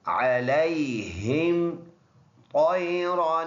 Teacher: طا موٹا را بھی موٹا کیونکہ را کے اوپر 2 زبر آئے ہیں، پر یہ 2 زبر کے ساتھ جو الف آتا ہے اس کو نہیں پڑھنا ہوتا، تو یہ الف سائلنٹ ہے۔